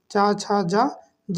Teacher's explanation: च वर्ग के हमारे जितने वर्ग होते हैं सब किससे बोले जाते हैं तालू से बोले जाते हैं